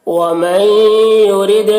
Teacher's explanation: نون ساکن کے بعد حروف یومن میں سے یا ہے، تو نون کو یا سے بدل کر غنہ کے ساتھ پڑھیں گے، اس کو ادغام ناقص کہتے ہیں۔